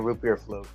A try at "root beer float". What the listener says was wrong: It's float, not flute. See, you said flute again. I don't know if it's just an accent. Oh, when you say it like slightly or something like that, it sounds like you're saying flute.